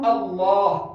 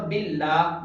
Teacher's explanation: لفظ اللہ کا جو یہ لام ہے اس کو ہم اللہ موٹا بھی پڑھتے ہیں اور باللہ باریک بھی پڑھتے ہیں